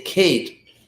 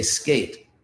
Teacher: And so in the word Kate, it's an aspirated K, and in the word skate, it's an unaspirated K.